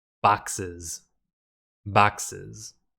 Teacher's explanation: We say boxes by adding an extra syllable. When we add an extra syllable to make a word plural, that S also needs to be pronounced like a Z.